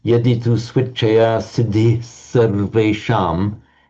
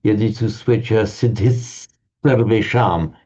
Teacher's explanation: where you have the Visarga before a s. It tends to be pronounced as a double s.